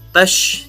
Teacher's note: alif lam ini adalah alif lam syamsiah. Jadi makanya alif lamnya tidak dibaca.